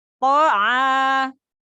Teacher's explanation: Huruf to, ujung lidah bertemu dengan tempat tumbuh gigi seri atas. To'a, ada makhorijul huruf a keluar dari tenggorokan bagian tengah